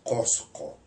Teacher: ese sonido es un sonido que llamamos postvelar que se articula en la úvula prácticamente